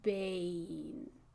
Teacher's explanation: I want the vowel to be a little longer than the N. Bane.